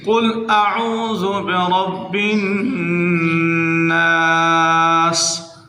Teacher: را کو موٹا کرنا ہے، نون مشدد کے اوپر غنہ کرنا ہے